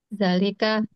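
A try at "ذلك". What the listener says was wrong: Zalnya panjang.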